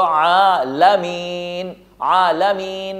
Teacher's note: عالمین میں عین کو تکلف کے ساتھ ادا کریں گے، لام کو نہیں کھینچیں گے. یوں نہیں پڑھ سکتے عالمین، جیسے پرانے انداز میں قرآن شریف جو پڑھتے ہیں وہ زبر زیر پیش کو زیادہ کھینچتے ہیں، اور سب سے بڑی غلطی یہی ہے.